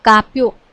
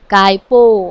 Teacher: ય ની હેરફેર થઈ જાય છે એટલે જ્યાં ય આવતો હોય એ આગળ પાછળ એનું સ્થાન પરિવર્તન થઈ જાય